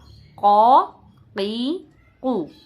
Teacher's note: تینوں آوازیں موٹی نکلیں گی قاف کی